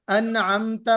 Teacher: नून को जाहिर करके पढ़ेंगे, यानी क्लियर करके पढ़ेंगे। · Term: इजहार